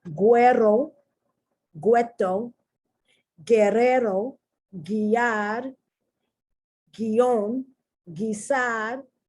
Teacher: the U is not pronounced. It's only there to tell you that you pronounce the G like G, G, G. Okay.